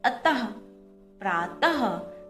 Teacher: जब हम इन शब्दों को बोलते हैं तब हमारे मुंह से आखिर में ह की ध्वनि निकलती है